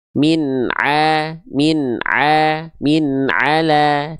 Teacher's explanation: tipiskan dua-duanya, ya. Ainnya tipis, lamnya tipis.